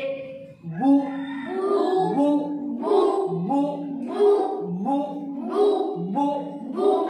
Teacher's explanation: बा के ऊपर पेश लगने से आखिर में होठ गोल होंगे